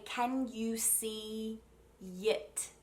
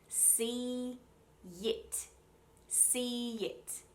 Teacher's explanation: that connecting y comes at the beginning of the second word